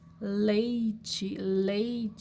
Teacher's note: quando você encosta a ponta da língua lá nos dentes a sua língua meio que faz um arquinho e o ar passa pela lateral da sua boca por isso se chama lateral